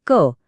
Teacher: कंठ्य म्हणजे थेट घशातून येणारे आवाज